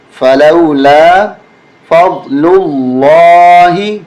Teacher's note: ثم تولیتم من بعد ذلك، فا زبر فا، لام واو زبر لو، لام الف زبر لا، فلولا، فا ضاد زبر فض، لام لام پیش لل، لام کھڑا زبر لا، حاضر ہی، اس درمیانی لام کو موٹا کر کے ہم پڑھیں گے